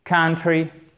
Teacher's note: accent tonique sur la première syllabe